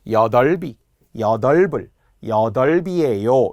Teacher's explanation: 모음 조사가 오면 비읍이 올라간다는 거예요. 여덟비, 여덟불, 여덟비예요 이렇게 발음하는 거. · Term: 연음